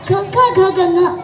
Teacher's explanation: ಕಂಠದ ಸಹಾಯದಿಂದ ಉಚ್ಚರಿಸಲ್ಪಡುವಂತಹ ಕ ಖ ಗ ಗ ङ ಅಕ್ಷರಗಳನ್ನ ಕಂಠವ್ಯ ಅಂತ ನಾವು ಕರೀತೀವಿ